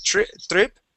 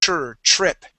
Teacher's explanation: remember when you have a TR that TR is going to be pronounced a CHR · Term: TR sound